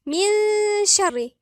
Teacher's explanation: مثلا النون والشين يبقى عند الشين في غنة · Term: غنة اخفاء